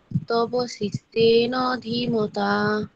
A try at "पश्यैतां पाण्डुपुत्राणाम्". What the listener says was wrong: এখানটাতে মধ্যান্য উচ্চারণ হচ্ছে না আর পসেতাম হবে এখানে পসতান বলছো তুমি পসেতাম